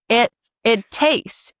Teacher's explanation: make sure that that t is glottalized, right?